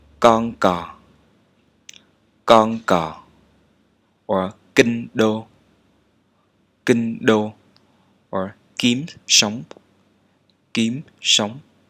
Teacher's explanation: Stop manner. Both sounds like skip or okay in English, but no aspiration.